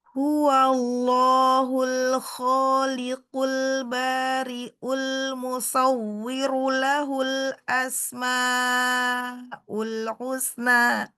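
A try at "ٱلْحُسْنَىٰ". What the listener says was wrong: Ya, jadi ke husna. pertama itu husna, makhraj ha.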